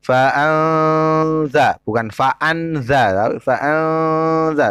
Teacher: Cara membaca non matinya dengan samar atau dengung. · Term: ikhfa